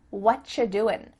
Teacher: you doing we could reduce this to say what you're doing it sounds like a CH sound here and actually we've cut out completely the word are